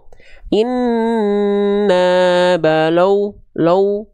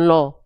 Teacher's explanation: jangan sampai lamnya juga ini ikut monyong la bukan lo